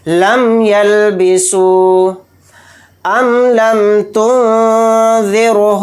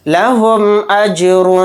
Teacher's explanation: میم کو ظاہر کر کے بلا غنہ کے جلد پڑھیں گے یعنی غنہ نہیں کرنا ہے. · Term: اظہار شفوی